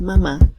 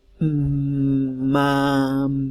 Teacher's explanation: si decimos mamá, podemos hacer durar la M y podemos hacer durar la A